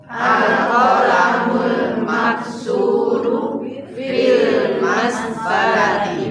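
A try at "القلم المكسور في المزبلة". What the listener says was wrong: Pakai zai, huruf za dari ujung lidah dengan gigi bawah. Jangan sampai nempel. Itu kalau nempel huruf jadi huruf jim atau huruf jim.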